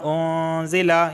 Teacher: علینا بما انزل، یہاں پہ دیکھیں نون ساکن کے بعد زا آیا ہے اور زا جو ہے یہ حروف اخفا میں سے ہے، تو یہاں پہ اخفا والا غنہ ہوگا